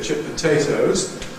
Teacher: Certainly stressed on the second element. · But this t in chipped, past tense marker, is of course exactly in the place where you get elision. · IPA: ˌchip poˈtatoes, [ˌʧɪp pəˈteɪtəʊz]